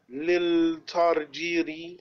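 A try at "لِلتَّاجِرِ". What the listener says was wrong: Lit Tarjiri. Yes, there's a shutdown ta, so we'll join ta with lam. Lit Tarjiri. Second lam is silent.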